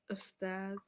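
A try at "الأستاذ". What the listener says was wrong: But you said Ustad. You said Ustad. Now look at it again. So what did you not? You saw the al and you ignored the al. The al is very insulted by the deliberate.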